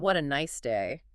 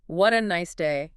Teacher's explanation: we usually let our voice rise with enthusiasm. We definitely don't speak it flatly. We actually smile when we say it because the physical tone of our voice dictates how we feel.